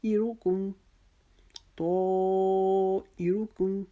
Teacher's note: آگے آیت نمبر 19، قالو، کا کو ایک الف کے جتنا لمبا، لو کو ایک الف کے جتنا لمبا، تو تا کو ہم نے موٹا پڑھا اور ہم نے اس کو 6 الف لمبا کیا، ایروکم، ای، تو ای، جب ہم نے ای پڑھا تو ہم نے اپنی آواز کو باریک کر دیا، ای آگے را کے لیے ہم نے اپنی آواز کو پھر موٹا کرنا ہے کیونکہ را کے اوپر پیش آ رہی ہے